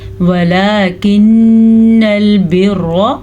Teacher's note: और रॉ को पुर पढ़ेंगे रॉ पे ज़बर की वजह से